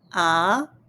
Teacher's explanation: The second tone goes up.